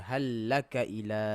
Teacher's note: Okey, seolah-olah macam hal lam yang first tu tak ada. Macam terus masuk je kan. Tapi memang dia kena ada. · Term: idgham